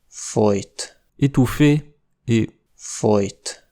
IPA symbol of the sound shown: j